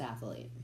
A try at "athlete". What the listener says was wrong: No, it's not athlete. It's not. You're adding a syllable.